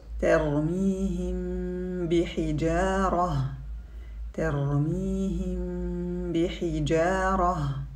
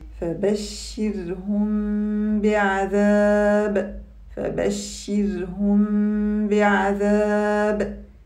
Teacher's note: We hide the Meem Sakinah when it's followed by the letter Ba. Hiding it means to pronounce it in a way that falls between the Idhar and Idgham. We don't separate the lips completely when pronouncing the Meem. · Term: إخفاء